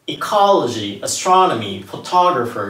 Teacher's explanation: Ecology、▁Astronomy、▁Photographer▁の場合は2番目にアクセントがあります